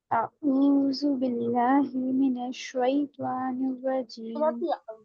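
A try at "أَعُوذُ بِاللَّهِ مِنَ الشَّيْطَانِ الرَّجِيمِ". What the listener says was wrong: बड़ी हा की अदायगी, रहमान और रहीम में आऊज़ु में आइन की अदायगी, इस पे मेहनत करिएगा आप फिर, ठीक है।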